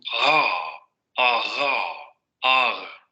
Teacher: Solamente se va a acercar el dorso de la lengua, la parte posterior de la lengua, para generar ese sonido fricativo. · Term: uvular fricativa